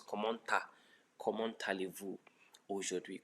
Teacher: So there's a liaison between the T and the A, becomes comment allez-vous aujourd'hui.